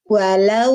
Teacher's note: Jadi suara waw sukun bunyinya u. Waw ada sifat rohwah, mengalir suara. Berarti harus mengalirkan suara u. Walau. Jadi jangan walau, ya.